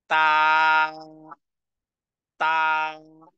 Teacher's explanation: দুটি অক্ষর হলো এরপরের অক্ষর তা এর উচ্চারণ হলো জিহ্বার আগা জিহ্বার আগাকে সামনের উপরের দুই দাঁতের গোড়ার সঙ্গে লাগিয়ে টেনে পড়তে হবে